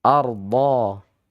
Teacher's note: Terhampar, meluas, menutupi langit-langit mulut dengan sempurna. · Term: sifat istitalah